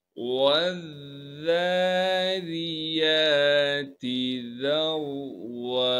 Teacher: واو کو ڈائریکٹ ذال سے ملائیں گے اور ذال کو نرم کر کے باریک کر کے پڑھیں گے